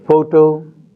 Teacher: in the first word the stress is on the first syllable